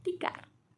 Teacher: t kecil bunyi hambat apikodental atau laminoalveolar tak bersuara